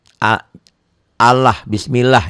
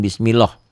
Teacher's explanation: Allah ini dibacanya tipis bunyi a ya jangan Bi jangan bunyi o tapi bunyi a a Allah